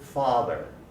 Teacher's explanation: the tongue position is a little further back and a little lower in english